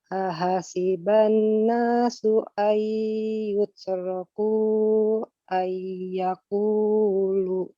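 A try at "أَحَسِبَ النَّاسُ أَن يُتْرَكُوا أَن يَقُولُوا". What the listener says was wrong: Ahasiban nas, nun di sana bertasdid. Tahan lebih lama. Ya, kemudian ayyutraku dan ayyakulu, ya-nya sama-sama ditahan lebih lama. Ahasiban nasu.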